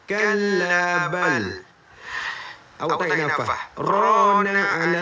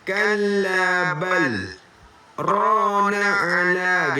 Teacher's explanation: Saktah ni adalah kita berhenti seketika tanpa menarik nafas. Saktah ini adalah berhenti seketika tanpa menarik nafas.